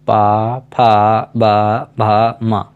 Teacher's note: इन सभी का उच्चारण करते समय हमारे जो ओंठ हैं दोनों ओष्ठ आपस में मिलते हैं, इसलिए इन्हें ओष्ठ वर्ण कहते हैं।